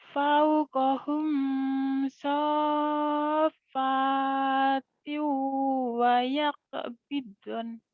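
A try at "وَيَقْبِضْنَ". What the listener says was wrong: Nah, sudah bagus cuman kurang nyamber doang ya di tasdid-tasdidnya. Awalam yarau ila tayri fawqahum saffat fawqahum saffatin wa yaqbidan. Itu kurang nyamber, dilatih ya nyambernya.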